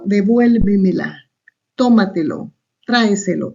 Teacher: la sílaba tónica está antes de la antepenúltima sílaba